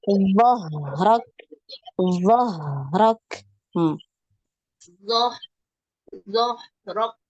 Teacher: dhah dialirkan ya. Ha ini ngalir ya, ada aliran suara.